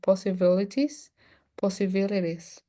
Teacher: people sometimes say possibilities and you can change the T by an R.